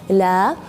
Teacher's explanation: Istifal dan infitah ini istifal artinya ujung lidah atau pangkal lidah tidak naik ke langit-langit, jadi bacanya datar, la. Terus yang sifat keempat yaitu infitah, ketika melafalkan huruf lam itu sebagian besar dari lidah itu secara datar.